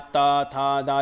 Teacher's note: ता, था, दा, जीभ लगती है दंत पे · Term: ता वर्ग दंत